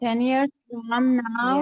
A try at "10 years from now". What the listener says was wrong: Yes, very good.